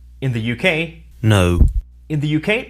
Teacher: in the uk the sound is a schwa followed by an uh as in put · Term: o diphthong